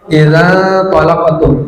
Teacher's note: nun sukun bertemu qa, itu ikhfa, disamarkan dan didengungkan. Samar itu artinya tidak dibaca jelas nunnya, nun sukunnya, tidak dibaca idzan, tapi idza talaqtum.